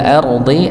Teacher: Kalau wa ilal ardi, ardi dibaca tebal. Ra sukun sebelumnya fathah maka tebal